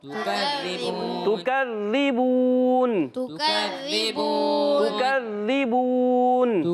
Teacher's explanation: وقف بال اسکان کہ آخر میں نون کو ساکن کر دیا، اور حرف مدہ کے بعد عارضی سکون آ گیا، ہو گیا مد عارض